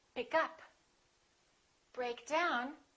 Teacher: we stress the second element which is usually a preposition